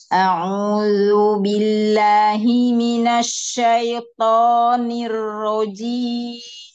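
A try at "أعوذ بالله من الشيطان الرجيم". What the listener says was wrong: Jangan ke hidung akhirnya. Ya, domanya di kedepannya lagi bibirnya.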